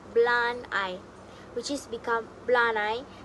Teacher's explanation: The D links directly into the vowel I in I. This makes the sentence sound smoother and more natural. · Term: connected speech